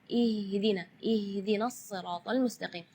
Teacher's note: Ya, itu tidak boleh, itu keluarnya dari dada. Sedangkan makhraj huruf H itu adalah dari tenggorokan. Jadi keluarnya tipis karena H itu termasuk huruf di antara 28 huruf hijaiyah yang paling lemah adalah huruf H.